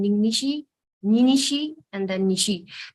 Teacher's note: It's much easier to say it as Ning Nishi becoming Ninishi. The na gets deleted because there is a presence of the alveolar nasal na, and then Ninishi from there, because of the repetition, it gets deleted initially and it becomes Nishi. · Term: deletion